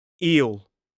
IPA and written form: iːl (eel)